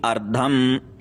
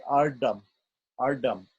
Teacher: Because he's a Tamil speaker, obviously, you will hear him say ardam, ardam, because ta and da are the same letter in Tamil.